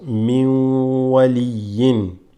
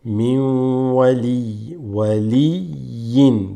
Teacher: Min, sukoon, this has a sukoon, but it's followed by a waw, okay, and that assimilates, becomes min waliyin.